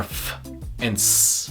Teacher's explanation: in both you hear the sharp sound of air moving through a narrow space · fricatives where air flow is constricted so much you get a sharp noise